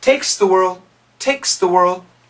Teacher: when we say it quickly the s cancels the th there is no th